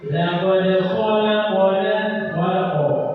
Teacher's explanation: Jadi kalau qaf disukunkan itu seperti seolah-olah dia fathah, padahal dia sukun. Saking tebalnya, saking baca tebal qaf itu, maka seperti dia berfathah, padahal dia tersukun. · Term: qalqalah